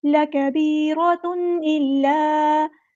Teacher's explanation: تنوین کے بعد حمزہ آیا ہے تو ہم نے اظہار کرنا ہے، اخفا نہیں کرنا، اظہار کرنا ہے، تنوین کی آواز کو ظاہر کرنا ہے